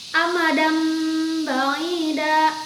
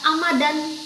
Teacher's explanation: nun mati atau tanwin yang bertemu dengan huruf iqlab, dibacanya menjadi mim